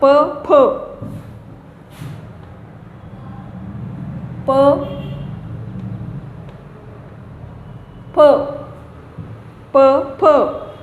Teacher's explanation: ओष्ठ, ओठांची हालचाल होते, ओठातून होतात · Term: ओष्ठ्यो